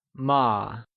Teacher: ma is pronounced using a neutral tone which carries a soft falling sound as if the sound is fading away